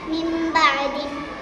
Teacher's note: நூன் சாக்கின் அல்லது தன்வீனுக்கு அப்புறம் பா வந்துச்சுன்னா நூன் சாக்கினையும் தன்வீனையும் மீமா மாற்றி குன்னா செஞ்சு ஓதணும் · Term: இக்லாப்